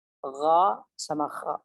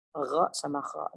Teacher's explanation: terakhir adalah tenggorokan paling ujung ya, paling atas